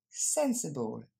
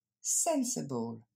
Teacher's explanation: L'accent tonique tombe sur la première syllabe, sen